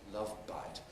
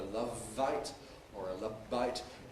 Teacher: it’s not a [ˈlʌv vaɪt] or a [ˈlʌb baɪt], but a [ˈlʌv baɪt].